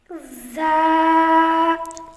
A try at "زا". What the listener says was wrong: زیادہ لمبا ہو رہا ہے زا۔ ز،